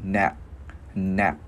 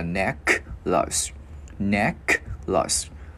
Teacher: Chữ N mình gắn vào ne. Chữ K mình khựng cổ lại. Nạc, nạc. Mình không cần phải bật cái hơi ra nha.